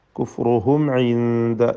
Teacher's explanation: സാക്കിന മീം ഇൽഹാർ ഷഫവി, മണിക്കാതെ വെളിവാക്കണം.